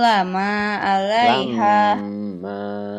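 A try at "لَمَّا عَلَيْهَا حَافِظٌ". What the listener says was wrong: Ingat, mim bertasdid adalah guna, harus ditahan dan ditekan bacanya.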